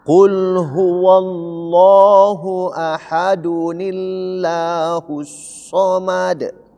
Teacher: Nah, pada saat ketika disambung ayat satu dengan dua, dun ini berubah menjadi dunil tipis, maka lanya itu nama Allah itu menjadi tipis